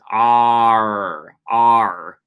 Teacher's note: It's a retroflex alveolar sound. So you kind of bunch your tongue up in the middle of your throat. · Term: American R